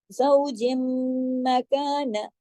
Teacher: زوجم, اب غنہ بھی ہوگا, کون سا, اکمل بڑا غنہ, کیونکہ دیکھیں میم پر جب بھی تشدید آئے تو بڑا غنہ ہوتا ہے. اور زوجم, جیم جو ہے وہ میم کے اندر ضم ہو جائے گا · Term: ادغام